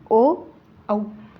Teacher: कंठोष्ट म्हणजेच असा भाग आहे की ज्याच्यामध्ये कंठ आणि ओष्ठ असे दोन मुखांचे भाग आहेत मग असे वर्ण आहेत ओ आणि औशा दोन स्वरांच्या उच्चारामध्ये मध्ये